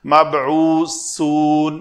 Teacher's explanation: با کے اوپر کلکلا کریں گے، سا کا مخرج سین میں نہیں لے جائیں گے، مبعوثون یہ سین بن جائے گی، تو اس کو سا رکھنے کے لیے نوکے لسان جو ہے یہاں دانتوں کے درمیان سامنے نظر آئے